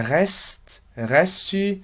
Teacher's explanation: eu não vou ter nenhum som de vogal ali no rest, vou falar rest apenas.